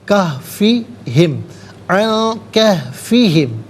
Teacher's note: عن میں نون ساکن ہے، اس کے بعد کاف حرف اخفا ہے تو نون ساکن کو اخفا کے ساتھ پڑھیں گے، ناک میں آواز لے جا کر گنگنانا اسے اخفا کہتے ہیں۔